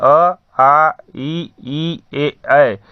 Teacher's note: जिन स्वरों के उच्चारण में हमारे ओठ गोलाकार नहीं होते हैं उन्हें हम अवृत्तमुखी स्वर कहते हैं। जैसे अ, आ, ई, ए।